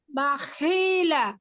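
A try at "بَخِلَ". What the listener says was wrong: এই যে বাখি কেন টান দিচ্ছেন আপু? সব কয়টা একরকম হবে। বাখিলা বাখিলা বাখিলা।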